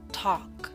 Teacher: Note the L is silent in talk.